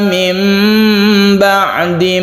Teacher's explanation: Iklab artinya membalik suara nun menjadi mem mati